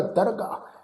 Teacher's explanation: ਇਸ ਦਰਗਾਹ ਸ਼ਬਦ ਨੂੰ ਅਸੀਂ ਦਰਗਾਹ ਇਸ ਢੰਗ ਨਾਲ ਉਚਾਰਨ ਨਹੀਂ ਕਰਨਾ, ਹਾਹੇ ਨੂੰ ਸਿਹਾਰੀ ਲਗਾ ਕੇ ਉਚਾਰਨ ਨਹੀਂ ਕਰਨਾ। ਇਹ ਸ਼ਬਦ ਦਾ ਉਚਾਰਨ ਹੋਏਗਾ ਦਰਗਾਹ।